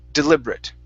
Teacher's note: that ate is pronounced like a short i and a t